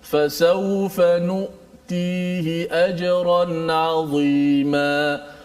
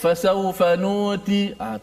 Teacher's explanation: Dia tertahan. Suara kita bila menyebut hamzah tu, dia tertahan.